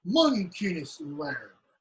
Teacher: Mon, stress. Kin, secondary stress. S, no stress.